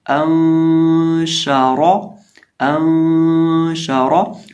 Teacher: نون ساکن کے بعد شین ہو تو اخفا ہوتا ہے، کیونکہ شین حروف اخفا میں سے ہے۔ · تو اس کو پڑھیں گے انشارا، انشارا، اور را کو موٹا کریں گے